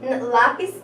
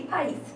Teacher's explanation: Mas não é a mesma regra, porque lápis é uma paroxítona e país é uma oxítona